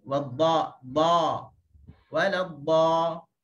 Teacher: bukaan bagi huruf dad, huruf isti'la adalah bukaan yang luas kerana dia adalah huruf yang tebal.